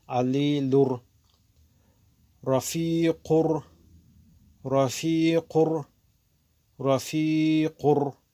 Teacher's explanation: таштдид мешавад, дохил мекунем нуна ва бе овози димоғ хонда мекунем, равшан мекунем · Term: идғоми беғна